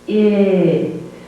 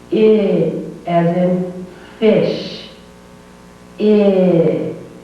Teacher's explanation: The tongue is not quite as high and the tongue is not quite as tense as the E sound. The tongue is dropped just a little bit and a little bit relaxed. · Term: short sound